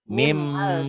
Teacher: Ditulisnya ada bunyi N-nya dibacanya bunyi N-nya hilang. Hilang melebur ke bunyi M. Karena setelah N ketemu Iya. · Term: Idgom diguna